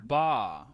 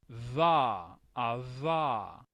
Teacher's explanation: Esta, aunque se hace como bilabial, es un sonido fricativo, que significa que hay como un rozamiento, digamos, en nuestra cavidad bucal cuando expulsamos el aire.